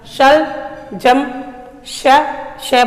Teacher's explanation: हमारी जो जीभ थी आगे का भाग सीधा अपने ऊपर वाले दांतों के ठीक थोड़ा आगे तालु से स्पर्श करती है।